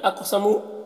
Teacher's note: قاف کو پر پڑھیں گے، حروف مستعلیہ میں سے ہے اور قاف میں قلقلہ کریں گے